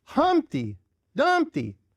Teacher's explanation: Specifically, trochaic tetrameter, often catalectic, missing the final unstressed syllable. A trochee, stressed, unstressed.